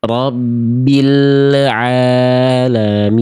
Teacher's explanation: Salahnya adalah lam sukunnya memantul ya. Ada bunyi penghujung e di ujung pelafalan el. Harusnya tidak boleh ada robil.